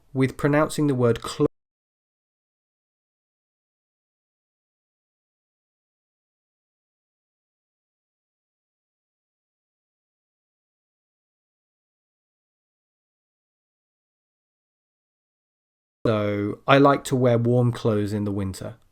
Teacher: But the most important sound in this word is the z at the end, close, close. So a lot of native speakers, when they're speaking quickly, they will, without realizing it, drop the th sound. And so the word itself ends up sounding like close, like to close a door.